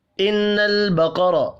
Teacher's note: نون مشدد پر غنہ کریں گے